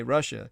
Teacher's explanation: when americans say russia the first and second syllable rhyme and this is actually baffling since the first vowel is a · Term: uh sound